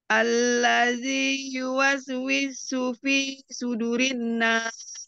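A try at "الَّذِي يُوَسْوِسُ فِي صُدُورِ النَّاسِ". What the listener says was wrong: Panjang du.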